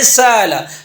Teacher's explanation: زبر ہے، زبر کے مطابق حرف ہے الف، لہذا حمزہ کو حمزہ اور الف کے درمیان ادا کرنے کو ہم کہیں گے بین بین قریب کر کے پڑھنا۔ جیسے سألا سے سالا، سالا، اس کو نہ سالا پڑھیں اور نہ سالا پڑھیں، درمیان میں کر کے پڑھیں سالا، تو اس کو کہتے ہیں تخفیف قریب، ٹھیک ہے۔